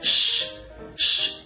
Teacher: El último sonido de este verbo es sh, sh. Es un sonido sordo.